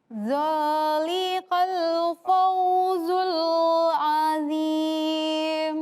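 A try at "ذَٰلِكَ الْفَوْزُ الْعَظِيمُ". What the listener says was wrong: Ini dzalika, ini huruf kaf. Bukan huruf qaf.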